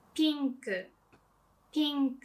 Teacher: So it's more like e sound, but the vowel is short.